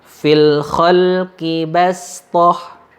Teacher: istilah membaca huruf shad dengan bunyi huruf sin